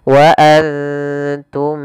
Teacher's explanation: Suara mimnya harus jelas tidak boleh ditahan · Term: izhar syafawi